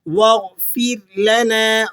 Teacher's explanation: را کو آپ نے باریک کر کے ادا کرنا ہے